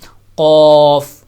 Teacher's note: جہاں سے زبان کا اختتام ہوتا ہے اینڈ پہ جا کر، وہیں سے قوف کو اوپر کی طرف لگائیں گے سخت حصے پہ، تو وہاں سے قوف ادا ہوگا، قوف۔